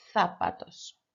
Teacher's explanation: Just remember that that Z needs to sound like a th sound, a TH. Zapatos.